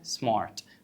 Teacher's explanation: ليه بقى هننطق الار خفيفه؟ عشان قبلها في فاول.